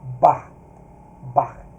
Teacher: A aberto, breve como em barca. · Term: patá